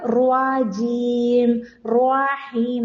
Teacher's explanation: തായും റായും പറയുമ്പോൾ ചുണ്ട് ഉപയോഗിച്ചാൽ വരുന്ന ഒരു മിസ്റ്റേക്ക് ആണ് വാവ് കേറി വരും